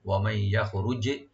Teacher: ইয়াখরুজ জিমটাকে এখানে কলকলা করতে হবে একটু